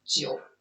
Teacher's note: that's when you're using the Chinese third tone, because when you do it, can you hear that? Well, you're doing the go down and up. the wave thing.